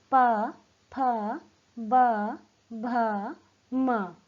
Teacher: ये ओष्ठ्य व्यंजन है, क्योंकि इनका उच्चारण करते समय हमारा निचला होठ ऊपर के होठ को छू रहा है। तो क्योंकि इनका उच्चारण होठों के स्पर्श होने से हो रहा है, तो ये ओष्ठ्य व्यंजन है।